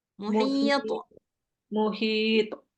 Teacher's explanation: dia seolah-olah barisnya itu kayak lebih ke fathah tapi dia bukan 100% fathah Nah karena dia qqalah dia enggak ada baris kan dia sebenarnya